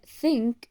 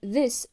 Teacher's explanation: the sound th in think and the sound the in this are produced by placing the tongue lightly between the upper teeth · the sound th in think is voiceless because the vocal cords do not vibrate while articulating it, whereas the sound th in this is voiced, which means the vocal cords vibrate while pronouncing the sound. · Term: dental sounds